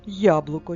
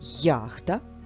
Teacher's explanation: які звуки позначає буква я на початку слова Після голосного два звуки й та а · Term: звукосполученням й а